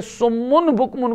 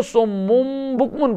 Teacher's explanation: ایک تو یہ 12 اور تنوین اور نون ساکن کے بعد با آ جائے تو قلب، یعنی تبدیلی وہاں کرنی ہے نا. نون کی آواز کو میم سے، نون کو میم سے بدلنا ہے، نون کو میم سے، جیسے سمن بکمن کو سمم بکمن پڑھنا ہے.